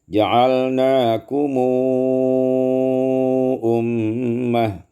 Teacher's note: 143 ja'alnakum ummat, silah mim biwawin madiyah musba'ah, disilahkan mim dengan waw mad yang panjang